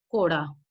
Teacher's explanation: And again, we have a falling rising contour.